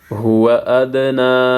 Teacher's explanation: زبر نا ہوا ادنا یہاں پہ دال ساکن ہے قلقلہ ہوگا نون کے اوپر کڑا زبر ہے ایک الف کے مقدار کھینچنا ہے